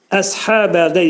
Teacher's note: sad hərfi dil kökdən yuxarı qaldırılıb dolu sad hərfi deyilir və sadın qalınlığını əyə vermək olmaz.